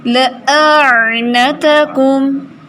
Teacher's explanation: حمزہ ہے سختی سے، عین سافٹ ہے.